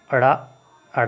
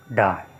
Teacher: जीभ की उल्टी नोक तालु को छूकर, तालु को छूकर झटके से हट जाती है, झटके से हट जाती है। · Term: उत्क्षिप्त व्यंजन